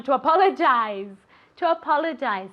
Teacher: you have that Zed sound that you have to move your vocal cords like a little B